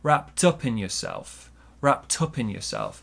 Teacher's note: you can see we link the d and the u wrapped up wrapped up with a t sound wrapped up in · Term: linking